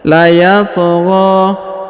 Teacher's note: Huruf to dipantulkan atau dikolkolahkan ya, karena berharokat sukun ya. Layatgha. Lalu dipanjangkan 2 harokat ya, karena di atasnya terdapat alif kecil dan juga terdapat alif bengkok atau alif maksurah ya.